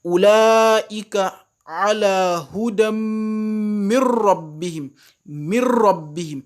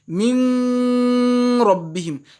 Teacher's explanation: Avec la lettre Ra, il faut noter qu'il n'y a pas de Gunna. · Donc ce qu'on veut de moi c'est que je ne mette pas gunna. J'ai fait idgham mais sans mettre gunna.